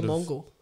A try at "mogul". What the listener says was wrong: Did you say mongol? You know the words mogul, right? not mongol, no. There's no N. There's no N, mate.